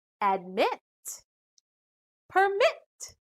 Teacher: these two syllable verbs the final syllables contain short vowels but still the stress is on the second syllable